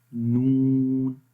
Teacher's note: انیاب سے لے کر ثنایا تک، یہ بالکل ایگزیکٹ یلو پلیس، ٹھیک ہے۔ تو یہاں پر جب زبان کی نوک لگتی ہے، ٹھیک ہے، زبان کا کنارہ لگتا ہے، تو اس وقت ہم نون پڑھتے ہیں